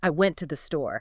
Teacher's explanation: The to and the become very short and weak, like ta.